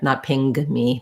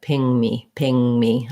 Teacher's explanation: you don't want any g sound sneaking in there